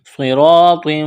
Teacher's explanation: را، صاد اور طا کو موٹا کرنا ہے